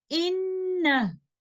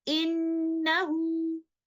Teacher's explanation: we will drop the mad and recite the word like this, in.